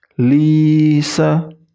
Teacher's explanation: tanda baca kasrah bertemu dengan ya sukun itu i-nya dipanjangkan. I.